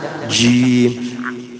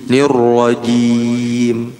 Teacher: Secara sifat dia jahar, tidak mengalirkan udara. Jadi tegas ji.